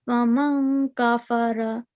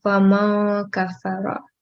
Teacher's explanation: So you need to try conceal the sound of noon. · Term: ikhfa